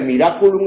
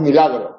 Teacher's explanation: Por eso de miraculum en latín nosotros decimos milagro y donde estaba la R hemos puesto la L y donde estaba la L hemos puesto la R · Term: las líquidas eh cambian